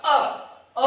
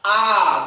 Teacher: अ बोला, आ 2 गुना समय लगा